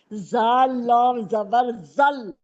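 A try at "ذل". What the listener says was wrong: زال کے نیچے دو زیر ہیں.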